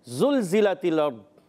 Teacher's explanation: ज़बान का सिरा और ऊपर के दांतों के अंदरूनी किनारे से ज़ाल अदा होता है